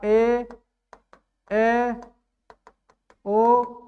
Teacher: ये सब के सब दीघा स्वर हैं लघु स्वर से दो गुना समय लगेगा